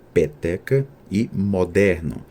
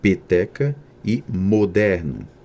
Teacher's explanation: o pretônicas em palavras como peteca e moderno dialetos da região Nordeste elas são pronunciadas abertas peteca e moderno em alguns dialetos do Sudeste e do Sul do Brasil São pronunciadas fechadas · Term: vogais e o pretônicas